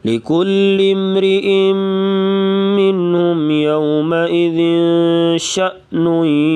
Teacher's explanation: شین کے ساتھ جو ہے حمزہ اس کو تھوڑا جھٹکے سے پڑھیں گے